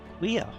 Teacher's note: queer, for example, is basically a KW sound followed by a vowel. And if you went kw, it doesn't really work without the vowel at the end.